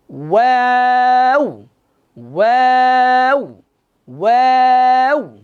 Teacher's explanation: কাফ কাফ, লাম লাম, মিম, নুন, ওয়াও, ওয়াও যখন বলবো একটু খেয়াল করেন, মুখটা গোল হবে, প্রথমে মুখ গোল করেন, ওয়াও, এরপর ছড়াবে, প্রথমে মুখ গোল হবে, তারপর কি হবে, ছড়াবে